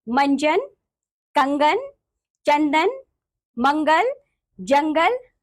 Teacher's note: स्वर यानी कि सेम नेजलस इनका उच्चारण नाक से होता है